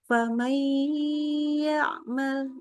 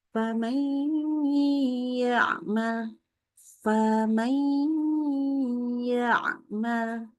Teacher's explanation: Berikan gunnahnya. Tahan dengan dengungan yang sempurna. 3 harokat minimal.